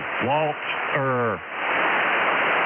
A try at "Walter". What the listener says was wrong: Not Walter. You got to get a little bit of the T in the Walt and the Tur.